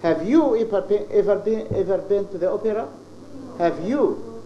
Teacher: So the stress is on you. So here the intonation expresses your feelings.